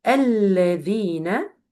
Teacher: make sure when you pronounce it that the tip of your tongue touch the two upper incisors